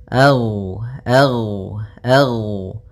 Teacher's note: rakhawah yang di mana suaranya mengalir a ag ag Nah tapi dia juga termasuk sifat huruf yang dia sifatnya adalah Jah jahar yaitu tertahannya nafas kita · Gin termasuk salah satu sifat huruf yang dia adalah sifat rakhawah yang di mana suaranya mengalir